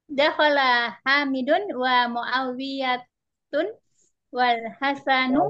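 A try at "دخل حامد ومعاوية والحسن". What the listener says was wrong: Muawiyah. Muawiyah tak boleh tanwin.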